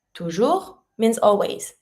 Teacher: And you don't pronounce the last S. Toujours, you don't pronounce the S, it's mute.